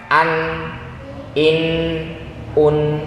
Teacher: Ujung lidah nempel ke gusi, rongga hidungnya keluar suaranya. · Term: izhar